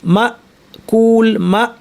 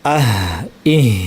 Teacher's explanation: হামজায় আওয়াজটা কাটঅফ হয়ে যায়। যেমন মা কুল মা বলার পরে আর কোন আওয়াজ শোনা যায় না।